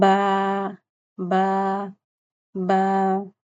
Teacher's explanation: ہونٹوں کے اندرونی گیلے حصوں کو آپس میں ملانا، بی کی ساؤنڈ ہوتی ہے باریک اور سخت آواز ہوتی ہے